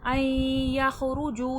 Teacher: این یخرجو، این میں ہو رہا ہے ادغام مع الغنہ، نون ساکن کے بعد ینمو کا یا آ گیا ہے، دو لفظ ملیں گے آپس میں غنہ کے ساتھ۔ این یخرجو، جو میں واو مدہ ہے، واو ساکن سے پہلے پیش ہے، کھینچ کے پڑھا جائے گا۔